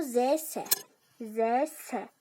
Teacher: S-də daha çox hava gəldi. Deməli, S çar samitdir.